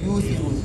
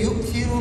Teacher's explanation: اختلاف جو دونوں راویوں کے درمیان میں ہے وہ کیا ہے، حمزہ کو سوسی نے واو سے تبدیل کیا ہے اور دوری نے حمزہ ہی پڑھا ہے